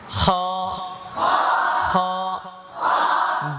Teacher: খ বলার সময় আরেকটা ভুল করে, ঠোঁট গোল করে দেয়